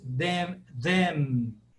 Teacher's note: quando uma palavra termina em M aí eu fecho os lábios